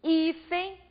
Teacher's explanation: eu intensifico a penúltima sílaba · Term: paroxítona